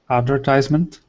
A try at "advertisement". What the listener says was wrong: Good.